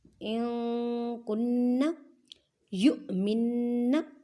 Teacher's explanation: حمزہ ساکن ہے، اس وجہ سے جھٹکا دے کر پڑھیں گے. نون مشدد گنہ کریں.